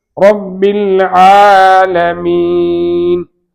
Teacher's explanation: வாயை காலி செய்து சொல்ல வேண்டும். ரா ரா ஃபத்ஹ் பெற்று வந்திருப்பதால் ரா தஃபீம் வாய் நிரம்ப சொல்ல வேண்டும். வாய் நிரம்ப சொல்லுதல் என்றால் ரப்பில் ஆலமீன்.